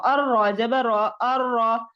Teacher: اور اس میں جو را کا قاعدہ ہوتا ہے کہ را مشدد پر زبر ہو یا دو زبر ہو، پیش ہو یا دو پیش ہو، تو وہ را موٹی پڑھی جائے گی. جیسے حمزہ زبر را ار، را زبر را ار را.